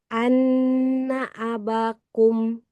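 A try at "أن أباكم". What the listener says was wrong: Bannya panjang. Abakum.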